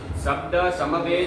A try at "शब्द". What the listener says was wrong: शब्द नहीं बाबा, शब्द तालव्य शकार है।